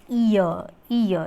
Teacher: Center position aanu. The lips are unrounded for both elements